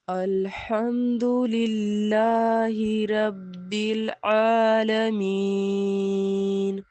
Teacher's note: या मद्दा की वजह से हमने या को खींचा है अलिफ की मिक़दार में